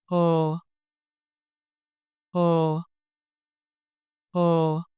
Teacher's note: hue The initial consonant h a gentle breath sound, no friction.